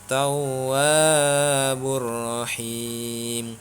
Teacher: tawwabur rahim dibaca tidak berdengung karena hukum bacaannya adalah idgham bila gunnah.